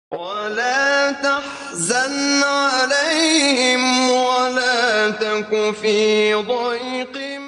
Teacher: قاری نے لفظ سے ایک پورا حرف ہی گرا دیا اور وَلَا تَكُن نون اور اخفاء کو چھوڑ کر وَلَا تَكُ پڑھا